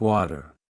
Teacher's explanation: In American English, the T sound between vowels often turns into a soft D sound. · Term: flap T